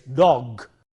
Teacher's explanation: But if you have voiced sound, as in this case dog, g is a voiced sound, and therefore the plural form takes a z sound